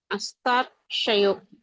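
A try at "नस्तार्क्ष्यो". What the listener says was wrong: க்ஷயோ இல்ல க்ஷோ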